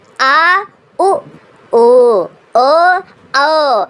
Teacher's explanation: इनकी संख्या 5 होती है, एक बड़ा आ, एक उ, ध्यान दीजिएगा उ और बड़ा उ, ओ सारे गले, आप बोल के देखो, आ उ ओ ओ, ये सब देखो गले से आवाज आ रही, जो गले से आवाज आएगी वो पश्च स्वर कहलाएगा। क्यों? क्योंकि जीभ के पीछे का हिस्सा सक्रिय रहता है ना।